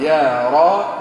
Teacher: مش يروا العذاب، يروا العذاب، يروا. ضم مليح الشفتين في الواو، وضحي